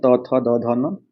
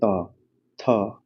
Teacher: उच्चारण इसका दांत से होता है